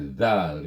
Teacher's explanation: Kemudian dia adalah bersifat rakhawah, suara kita terlepas, iaitu terus terlepas apabila menyebutnya Dzal gitu. Kemudian istifal, pangkal lidah tidak terangkat.